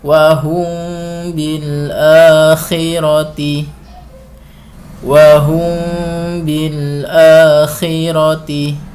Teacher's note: mimnya itu didengungkan dan jangan dirapatkan bibirnya agar dengung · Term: Ikhfa Syafawi